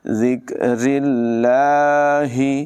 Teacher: گے۔ الی ذکر اللہ، زال کو بغیر سیٹی کے پڑھیں گے، را کی ادائیگی باریک ہوگی، لفظ اللہ کو بھی باریک پڑھیں گے